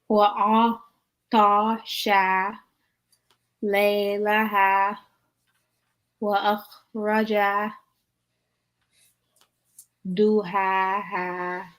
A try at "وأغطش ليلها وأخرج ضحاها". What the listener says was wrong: Yep, good job.